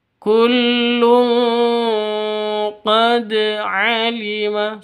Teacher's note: harus dipantulkan ke huruf dalnya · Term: qalqalah sugro